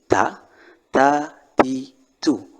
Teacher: huruf Ta ini adalah huruf yang penyebutannya di gigi